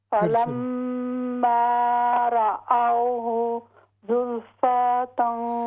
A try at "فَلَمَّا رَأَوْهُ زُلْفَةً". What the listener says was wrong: ہاں جی، فا کو ہم لمبا نہیں کریں گے،